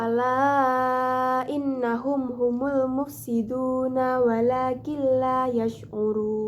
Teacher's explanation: Pada ayat ke-12, pada kalimat innahum terdapat hukum bacaan gunnah karena terdapat nun bertasdid, dibaca dengung dan ditahan sebanyak 3 harokat